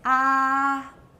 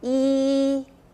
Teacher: If I just leave my mouth open, it's ah. But if I make my mouth smaller and my tongue goes higher, it becomes e. 这 边 的 动 作 是 一 样 的， 那 个 啊 跟 e 不 同， 完 全 是 在 口 腔 这 边 发 生 的。